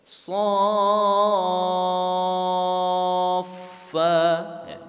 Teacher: Jadi so-nya dulu dipanjangkan 6 harkat baru masuk ke huruf fa-nya, ya. Jadi tidak 2 harkat. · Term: mad lazim